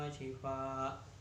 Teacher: bihuna sebab fathah tanwin bertemu wawu, wa shifaa bacaan wajib muttasil sebab mad bertemu hamzah dalam satu kalimat, panjangnya 2,5 alif atau 5 harokat